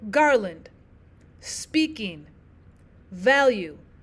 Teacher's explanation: Your stressed syllable comes first. So you have one stressed syllable followed by one unstressed syllable.